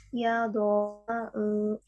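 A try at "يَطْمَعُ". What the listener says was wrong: Seperti huruf T, yat, yat, at, jangan yado. Ya, itu bukan huruf dod. Yato. toma'u.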